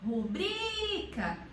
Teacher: Então, ela teria que ter uma acentuação para nós podermos pronunciar como rúbrica, mas ela não tem. A sílaba tônica dela é rubrica, então é o bri, que é uma paroxítona. E paroxítonas que terminam em A não são acentuadas.